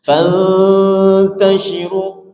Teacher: renggangkan ujung lidah kita ke gusinya karena ikhfa ya. Ikhfa itu dengung yang tersembunyi.